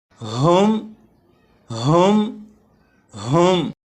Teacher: یہاں سے سبق شروع کریں گے، اور یہاں پر دیکھیں یہ جو لفظ ہے، اس لفظ کے شروع میں ہا ہے۔ ہا کو حلق کے نیچے والے حصے سے ادا کرتے ہیں، اور جب ہا کو پڑھیں گے تو آواز ذرا بھاری ہو